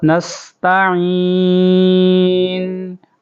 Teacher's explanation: یہ سین کی سیٹی کی آواز